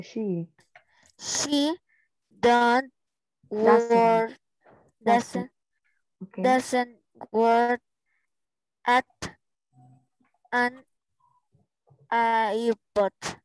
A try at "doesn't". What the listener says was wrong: Doesn't. This is the pronunciation, okay? Remember, doesn't, no don't. Okay, doesn't. This is the pronunciation.